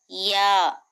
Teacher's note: जबान के दरमियानी हिस्सा और तालू के दरमियानी हिस्से से या निकलता है। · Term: मखरजे शजरी